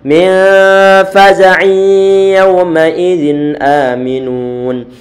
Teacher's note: Wa hum min faza'in yawma idzin aminun. Min faza', nun sukun bertemu dengan fa, bacaan ikhfa, ditahan suara dengungannya lagi.